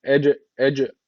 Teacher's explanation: EC derken bakın burada ne var cezimli e cim harfi var cim harfi kalkale harflerinden birisiydi cezim alırsa orada kalkale oluşuyordu O zaman burada kalkale tecti var Ne yapacağız hafif bir vurgulayacak